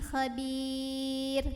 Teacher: tipis, ringan, pangkal lidah kita datar, nggak perlu diangkat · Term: tarqiq